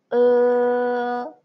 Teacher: First, pronounce o o, and don't move your tongue. Okay, don't move your tongue and make your lips from the round into the narrow.